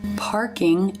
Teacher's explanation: you see the the tongue move up in the back for the r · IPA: ɹ